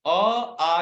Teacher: आ का उच्चारण स्थान है कंठ, कंठ्य